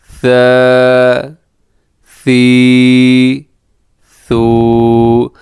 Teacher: ثا میں سیٹی نہیں ہے، تو کوشش کرنی ہے کہ یہاں پر اس میں سے اس حرف میں سیٹی کی آواز نہ ہو